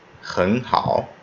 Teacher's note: Try to make the first syllable that has a third tone a rising tone, and make the second syllable a third tone as it normally would be.